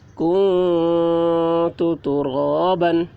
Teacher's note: نون ساکن کے بعد حروف اخفا میں سے تا آ رہا ہے، اس لیے نون کی آواز کو ناک میں چھپا کر پڑھیں گے، اس کو اخفا کہتے ہیں۔